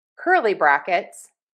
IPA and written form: ˈkɝ.li ˌbræk.ɪts (Curly brackets)